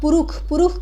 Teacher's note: मुर्धन स का उच्चारण जो है दंत स की तरह हो जाता है या ख के तरह हो जाता है